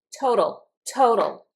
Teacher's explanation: When I pronounce this total, I pronounce the T explosively. But this T in the middle sounds like a D.